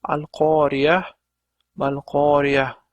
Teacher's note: Agar mana shu yerda birinchi oyatning oxirida to'xtamasdan, ya'ni vasl qilib o'qilganda edi, al-qoriya tumal qoriya deb o'qilgan bo'lar edi. Lekin biz hozir bu yerda vaqf qilganimiz uchun al-qoriya mal-qoriya deb h tovushi bilan tugatamiz.